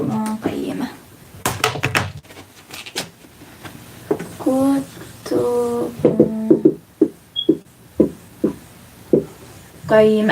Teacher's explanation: You have tanween followed by qaf, which is a heavy ikhfa letter this time. So this time it's heavy. So what you do is you conceal, you make gunna, and you do lengthen.